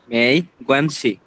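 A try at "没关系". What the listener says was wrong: Okay শি মেই গুয়ানছি, এটা যতটুকু ছোট রাখা সম্ভব, হ্যাঁ মেই গুয়ানছি যতটুকু ছোট রাখা সম্ভব, কারণ এখানে টোন নাই, যেটা টোন থাকবে না ওটার প্রোনাউন্সিয়েশনটা একদম শর্ট হবে।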